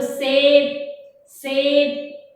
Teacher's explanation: जब आप से स सेब बोल रहे हो तो आपकी जीभ, आपकी दांत की जो जड़ है उस पर टकरा रही होगी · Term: दंत्य स